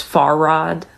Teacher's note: you would put an emphasis on the far